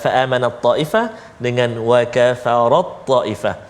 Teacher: Idgham maknanya kita masukkan bunyi ta ke dalam huruf ta